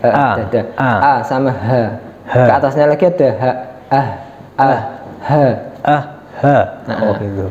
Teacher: tenggorokan yang paling bawah itu ada sama Alif atau Hamza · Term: pangkal tenggorokan